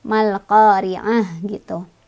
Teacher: tak marbutohnya kalau berhenti jadi ha ya, jadi ha gede, ha sukun.